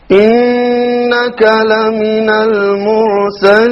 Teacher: Here we have a Ra, which is silent Ra, preceded by a Dhamma, so it will be heavy.